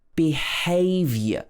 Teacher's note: the vowel sounds at the end of the word get shortened because of the stress in the middle